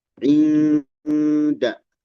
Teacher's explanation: Inda, ikhfa hakiki, inda, nun menghadapi dal ya.